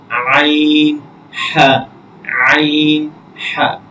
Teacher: হলকের মধ্যখান হইতে 2টি হরফ উচ্চারিত হয়, আইন এবং হা।